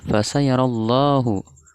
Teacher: Hukum bacaannya lam jalalah tafkhim, karena ada lafaz Allah didahului oleh fathah.